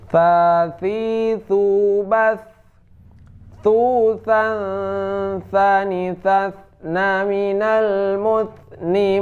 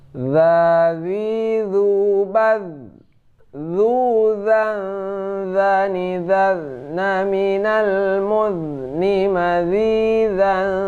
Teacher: kalau tha ini hamas, keluar angin. Kalau za tidak, kalau zo juga tidak.